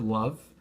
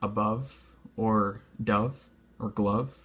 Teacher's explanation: Like the word love, that's clearly a V that you're working with, a voiced consonant, the V.